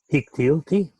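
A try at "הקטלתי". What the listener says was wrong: Ooh, this one, the regular endings that are not vocal, that is not the ah or the oo, they like to shorten that syllable and it becomes ah also. Hiktalti.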